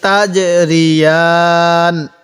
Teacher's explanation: এই জিমটা একটু ধাক্কা দিয়ে পড়বো, কারণ জিমটা তো কলকলা হরফ, এজন্য। তাহলে ফিহিমা আইনানি তাজরিয়ান, ওয়াকফ করলে এরকম ভাবে পড়ব।